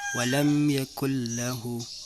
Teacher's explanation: adalah idgham yang dibaca tanpa dengung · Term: Idgham bila khunnah